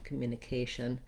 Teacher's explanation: you could do it as an I reduced vowel, communication. It's not going to make any difference in the ears of the listener as long as you're very quick and light and lax on that vowel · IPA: /ɪ/